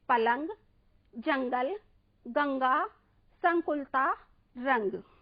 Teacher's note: और अनुस्वार में केवल ध्वनि नाक से ही बाहर निकलती है